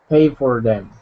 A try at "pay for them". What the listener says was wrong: Tongue up. Do you see how you have to train your tongue to stop moving? Because it wants to move.